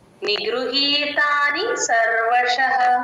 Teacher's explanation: గృహ తేల్చి చెప్పాలి అస్సలు స్ట్రెస్ ఇవ్వకూడదు వట్రసుడు ఎక్కడున్నా సరే నిగృత్ అంతే నిగృహి హి కి దీర్ఘం ఉంది గమనించండి